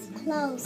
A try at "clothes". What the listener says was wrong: That TH is tricky because you don't hear it.